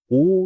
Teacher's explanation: உ என்ற எழுத்து உதடுகளை குவிப்பதால் வரும்.